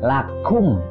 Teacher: Kaf cara mengeluarkannya itu harus disertai dengan udara